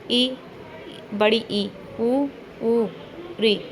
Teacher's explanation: वे स्वर जिनके उच्चारण में मुख बहुत कम खुलता है। संवृत स्वर कहलाते हैं।